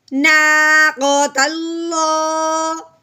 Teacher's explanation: لفظ اللہ سے پہلے ہم نے کیا پڑھا ہے کہ زبر یا پیش آ جائے تو لفظ اللہ کو موٹا کرنا ہے، اب یہاں پہ لفظ اللہ سے پہلے زبر آ گئی ہے تو اب ہم نے اس کو پور یعنی موٹا کر کے پڑھنا ہے